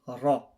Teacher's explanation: because it's got fathah, all you need to remember is that it's going to be read full mouth, ra